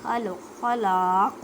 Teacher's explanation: جب ساکن کریں گے تو کلکلا کریں گے